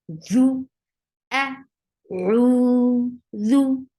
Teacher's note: When your tip of your tongue will touch the edge of your frontal 2 teeth is the makhraj of dal, and the sound is short, and you have to circle your lips.